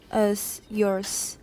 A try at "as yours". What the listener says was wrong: Yours. Z. 而后面的 S, Z, 不是 S. Yours. 你的不是你。就像不是像你一样，是像你的 vocal folds 一样。Go.